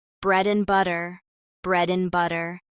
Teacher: and often becomes n in phrases like bread and butter